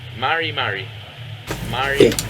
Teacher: you'll notice unlike um Spanish it is a soft R sound